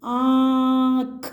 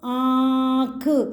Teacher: आपका open mouth भी हो रहा है और नाक में भी साउंड जा रही है। · इसकी साउंड नाक और मुंह दोनों से आती है। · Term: चंद्रबिंदु, चंद्रबिंदु की मात्रा